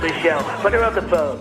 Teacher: we often drop the beginnings of pronouns like he him her his hers and them